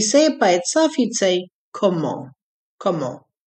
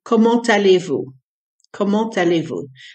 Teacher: But because the French like the language to flow, when you add a word that starts with a vowel after a lot of words with a silent final consonant, you run the sound of the last letter that would normally be silent into the vowel that follows. Comment allez-vous? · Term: liaison